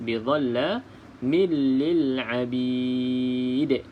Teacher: lantunannya sedikit kuat sebab di sini hukumnya qalqalah kubra, iaitu qalqalah yang sedikit kuatlah detakan dia berbanding dengan qalqalah sughra, iaitu huruf qalqalah yang berada di hujung kalimah.